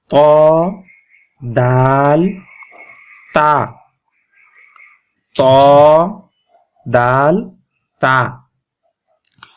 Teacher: উপরের দাঁতের গোড়া থেকে তিনটি হরফ উচ্চারণ হয়